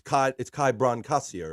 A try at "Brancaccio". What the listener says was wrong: Yeah, the C is pronounced hard, but it's not a big deal.